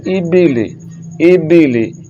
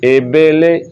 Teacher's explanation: ये गलत है, ये मजहूल तरीका है, मजहूल नहीं पढ़ना, मारूफ पढ़ना है। हमज़ा ज़ेर ई पढ़ना है, हमज़ा ज़ेर ए नहीं पढ़ना, बा ज़ेर बी पढ़ना है, बा ज़ेर बे नहीं पढ़ना, लाम ज़ेर ली पढ़ना है, लाम ज़ेर ले नहीं पढ़ना।